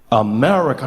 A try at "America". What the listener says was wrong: No, the husk. Bring the husk back. America.